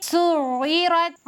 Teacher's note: را پر زبر ہے، را کو موٹا کر کے پڑھیں گے